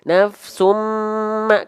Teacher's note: ketika kita buka tutup hidung seperti biasa kita cek itu suaranya tidak akan berubah tapi hilang karena dengungannya kuat